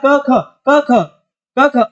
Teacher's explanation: क वर्ग का उच्चारण स्थान कोमल ताल या फिर कंठ से भी माना गया है